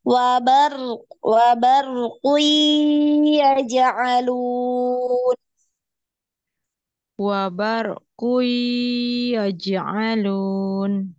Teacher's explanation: Jadi ngalir ya, wabar. Nah ini roknya sekali getaran, kemudian dialirkan suaranya.